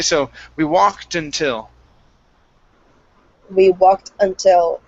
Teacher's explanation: put the T on walked okay uh and cut it off of the word walk and put it on the next word until so it's no longer until the word is now until okay